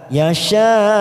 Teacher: Yasha mat wajib mutasil karena ada mat bertemu dengan hamzah dalam satu kalimat kita panjangkan 5 ketuk sambil kita wakafkan pada wakaf al waqfu aulah.